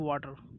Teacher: when the T is between two vowels, okay, it become D.